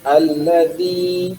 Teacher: makharijul hurufnya ujung lidah kita nih ke gigi dua seri